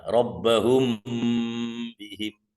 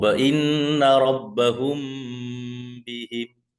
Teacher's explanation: Mim mati bertemu dengan huruf ba. Jadi disamarkan di bibir. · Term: ikhfa syafawi